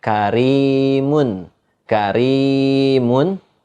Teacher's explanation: Nah, karimun itu dibaca tipis. Gitu, enggak dibaca tebal.